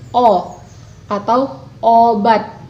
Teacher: Vokal pada awal kata dalam bahasa Indonesia sering diglotalisasikan. Misalnya, bunyi O dalam kata obat terdengar sebagai O atau obat, atau O diglotalisasikan.